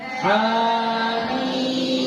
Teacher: Jadi ha 2 harakat, mim 6 harakat.